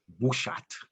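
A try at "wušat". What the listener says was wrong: Yeah, wushat.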